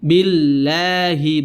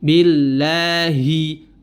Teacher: Huruf h keluar dari pangkal tenggorokan atau aqsal halqa.